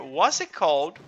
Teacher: we can kind of drop t sound here